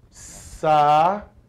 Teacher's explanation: Percebamos que o U está se separando da vogal anterior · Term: hiato